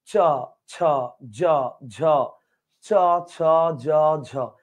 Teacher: খেয়াল করেন চ ছ জ ঝ চ ছ জ ঝ উপরের তালুতে জিহ্বার মাঝখানটা ঘসা খেয়ে খেয়ে উচ্চারিত হবে তো তালুতে ঘসা খেয়ে উচ্চারিত হয় বিধয় এটার নাম তালব্য বর্ণ আর ঘসা খেয়ে উচ্চারিত হয় বিধায় এটাকে ঘৃষ্ট বর্ণ বলা চলে